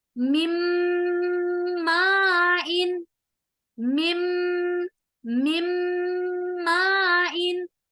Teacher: دونوں ہونٹوں کو آپس میں ملا رہے ہیں اور اس آواز کو ناک میں لے جا رہے ہیں، غنہ بھی ہو رہا ہے